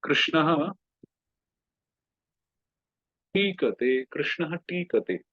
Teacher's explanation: then the Vishnu Sarga will become the Murdhanya, the cerebral Sha